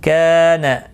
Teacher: کا الف مدہ ہے، نا کو کھینچنا نہیں